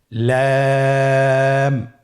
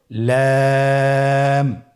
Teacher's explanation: লাম হরফটির মাখরাজ হলো জিহ্বার আগার কিনারা উপরের দাঁতের মাড়ির সঙ্গে লাগিয়ে উচ্চারিত হয়। · পরবর্তী হরফ লাম। লাম হরফটি উচ্চারণের ক্ষেত্রে অবশ্যই বারিক হবে এবং 3 আলিফ টেনে পড়তে হবে।